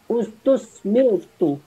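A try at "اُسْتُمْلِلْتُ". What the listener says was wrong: Tidak ada sod. Ustum, bukan ustus. Ustum. Mim.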